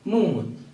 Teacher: during production of the sound the air is allowed to go through nose so a sort of nasalization is produced and the fourth sound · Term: nasal sound